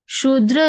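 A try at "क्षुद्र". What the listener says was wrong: Shudra. don't say Shudra. Shudra would be just S, It is K and S, so it's Shudra.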